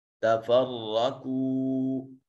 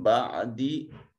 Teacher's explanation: تفرقو میں را کو مفخم پڑھا جائے گا، یہ مفتوح ہے۔ اور قو میں واو ساکن ما قبل مضموم واو مدہ۔